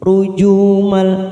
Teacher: tanwin bertemu dengan huruf lam warna oren di sini rujumal namanya bacaan idgam bila guna hanya masuk tanpa mendengung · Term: idgham bila guna